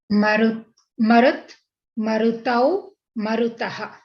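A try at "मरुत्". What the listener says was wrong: Very nice.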